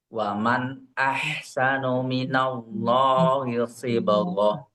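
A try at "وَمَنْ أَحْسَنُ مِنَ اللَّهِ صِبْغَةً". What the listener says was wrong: Oke, untuk nunnya coba tidak terputus Pak. Wa man ahsanu.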